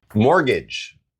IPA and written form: ˈmɔːr.gɪdʒ (mortgage)